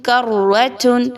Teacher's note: را مشدد ہے اور اس پر زبر بھی ہے، اس لیے اس را کو خوب تخفیم کے ساتھ یعنی موٹا کر کے پڑھا جا رہا ہے